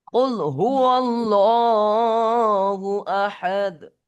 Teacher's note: قل هو الله أحد না ভাই, এখানে কায়দা কি, আল্লাহ শব্দের ডান দিকে জবর বা পেশ থাকলে তখন ল পড়তে হয়, উচ্চারণ লামকে, আল্লাহ শব্দের লামকে পুর করে মোটা করে পড়তে হয়